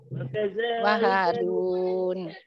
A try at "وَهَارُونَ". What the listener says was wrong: Runnya panjang.